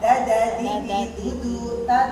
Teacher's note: ta kan ujung lidah di gusi atas ya sama kayak dal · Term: ta tipis